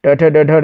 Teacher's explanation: ट वर्ग में तो ट यानी कि मूर्धन है। ट, ठ, ड, ढ, ये सब मूर्धन में आते हैं।